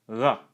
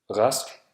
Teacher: At the beginning of words, R is pronounced as R, a voiced uvular fricative, or R, a voiced uvular approximant at the back of the throat.